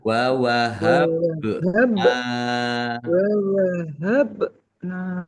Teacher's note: ba sukun bacaan qalqalah dibaca memantul